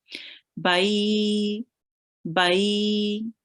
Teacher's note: So we this is going to be a ya leen, and we join the ba onto the ya really softly and prolong it for 2 seconds